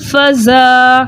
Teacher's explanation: الف مدہ کو 2 حرکت کی مقدار کھینچ کر پڑھیں گے